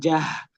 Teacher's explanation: Ingat ya, di tenggorokan bawah. Jangan dia jadi tipis sampai naik ke tenggorokan tengah, jadi jah.